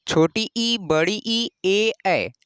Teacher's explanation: छोटी ई, बड़ी ई, ए, ऐ, इनको बोलते हैं अग्र स्वर। इन्हें बोलने पर ही जैसे लग रहा है कि आगे अग्र, जो जीभ का अग्र भाग है उसका प्रयोग हो रहा है।